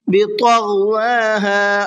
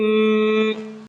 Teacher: طا کو اور غین کو دونوں کو پر کر کے پڑھیں گے